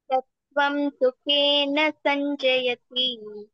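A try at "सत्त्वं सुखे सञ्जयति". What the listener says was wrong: Na is not there. Sattvam sukhe sanjayati.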